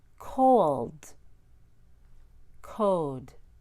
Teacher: Insert a W plus schwa after a long back vowel and before an L. So after long O, long U, or long OU, and before an L, add W.